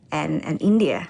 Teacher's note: She uses a rising intonation to express the afterthought, India.